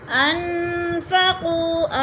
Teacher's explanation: ان نون ساکن آگے فا آ گیا ہے تو ادھر اخفا ہو رہا ہے، یعنی آواز کو ناک میں چھپا کر پڑھیں گے